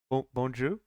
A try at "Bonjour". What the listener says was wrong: You need to say the R.